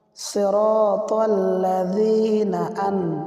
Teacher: নুন সাকিন কে গুন্না ছাড়া স্পষ্ট করিয়া পড়িতে হয় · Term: ইজহারে হাকিকি